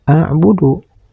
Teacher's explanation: Pada kalimat a'budu ini ada huruf dal di akhir kalimat dan dihentikan membacanya. Maka huruf dal ini harus dibaca qalqalah, yaitu qalqalah kubro. Karena huruf dal ini dihentikan membacanya.